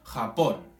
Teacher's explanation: Nosotros ponemos énfasis en el pon, de Japón. Esa es la sílaba tónica.